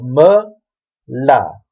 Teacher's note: The aleph here is pretty much silent because we don't have a vowel on the actual aleph itself. But I guess it slightly elongates the l sound.